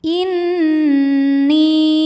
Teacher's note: Karena nun bertasydid, cara bacanya didengungkan. Jadi bunyi m tahan sampai ada suara masuk hidung kurang lebih dua harakat. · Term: ghunah musyaddadah